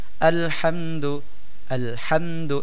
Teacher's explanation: পরে তা আছে আমরা এখানে হামদু ইজহার করে অর্থাৎ গুন্নাহ ছাড়া ইজহার করা বলতে গুন্নাহ ছাড়া পড়া গুন্নাহ না করে পড়তেছি আলহামদু এমন পড়তেছে না আলহামদু এভাবে পড়লে ভুল হবে আলহামদু আলহামদু